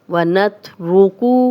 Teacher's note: را پہ پیش ہے، را کو موٹا پڑھیں گے، کاف کی پیش کو لمبا نہیں کریں گے